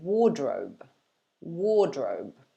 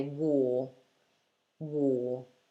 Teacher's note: we tend to drop the r sound especially when there's a consonant after it so the first r you can forget about and instead just lengthen the vowel